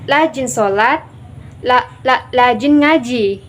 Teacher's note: terdapat penghilangan fonem konsonan R menjadi fonem konsonan L, karena yang mana seharusnya kata rajin diubahnya menjadi lajin